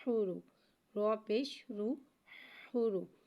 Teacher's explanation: رو کو ایک الف یعنی 2 حرکات کے برابر کھینچ کے پڑھیں گے۔ رو پہ پیش آ رہا ہے، لہٰذا ہم رو کو یہاں پہ موٹا پڑھیں گے